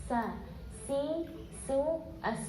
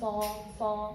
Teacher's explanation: ketika melafalkan huruf Sin pangkal lidah tidak bertemu langit-langit berarti apa berarti membacanya dengan lidah kita datar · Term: sifat istifal